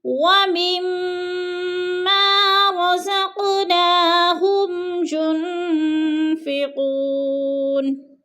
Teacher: ما کو بھی تھوڑا سا ہم نے لمبا کرنا ہے کیونکہ ادھر الف مدہ ہے۔